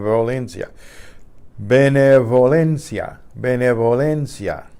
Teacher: the B again when it's between two vowels gonna be just like the V it's relaxed to let air escape